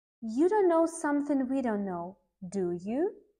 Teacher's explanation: If we are not confident in what we have just said, our intonation in the tag question will go up.